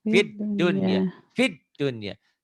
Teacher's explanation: Biasanya kan idgham bigunah nun mati ketemu ya. Tapi karena nun mati ketemu ya atau waw satu kalimat, nah, jangan dibaca idgham tapi dibaca idhar. Inilah yang dikatakan idhar mutlak.